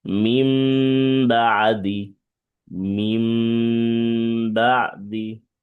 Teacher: নুন সাকিন বা তানবিনের পরে যদি এই বা হরফটা আসে, তাহলে উক্ত নুন সাকিন অথবা তানবিনকে মিম দ্বারা পরিবর্তন করে পড়তে হবে। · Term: ইকলাব